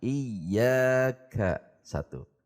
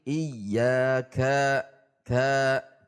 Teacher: Ka satu harokat tidak boleh naik.